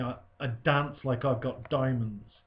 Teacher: the plosive alliteration of dance and diamonds further links these two images together